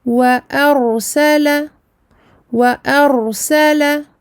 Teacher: Wa arsala, wa arsala, wa aminci, hamza aminci, mais le ra est emphatique, mufakhamah, parce qu'elle porte un soukoun, mais est précédée d'une fatha